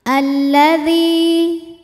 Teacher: Li hukumnya adalah mad tabi'i dhahiri. Sebab ada ya sukun yang sebelumnya berharokat kasroh. Maka dzal panjangkan 2 harokat.